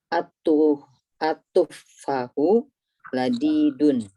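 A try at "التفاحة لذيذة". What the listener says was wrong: Nah, fa-nya panjang ya.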